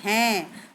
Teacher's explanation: तब हम चंद्र बिंदु नहीं लगाएंगे, उसकी जगह सिर्फ बिंदु लगता है, जैसे हैं, तो हैं में हमारा गले का टच भी हो रहा है और नाक का भी हो रहा है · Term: अनुनासिक